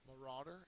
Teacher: it's a noun second syllable is accented